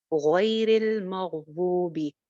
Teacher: गैरी पे नहीं रुक रहे, तो रॉ को लाम से जोड़ेंगे, रॉ जेर के साथ है तो जेर वाला रॉ बारीक होगा